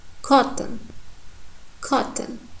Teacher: And the O sound in the second syllable totally disappeared. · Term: complete reduction